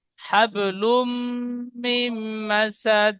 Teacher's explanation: নুন সাকিনের পরে ইউ মিনের 4টি অক্ষরের মধ্যে মিম এসেছে, তাই নুন সাকিন একালি গুন্না করে পড়তে হবে, একে ইদগামে নাকিস বলে।